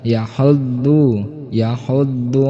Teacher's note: Biasa yahuddu menggunakan dot, yaitu ujung lidah menempel pipi bagian kiri ataupun kanan ataupun keduanya